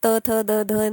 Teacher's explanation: झाले दंत्या झाले तुम्ही बघा त थ द धन म्हणालात तर तुमची जीभ जिभेचा पुढच टोक आहे ते बरोबर दातांना टच होत